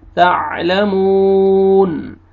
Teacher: मीम को आपने खींचना है